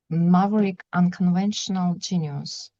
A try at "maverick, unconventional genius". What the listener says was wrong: Yeah, that's it. You've got it.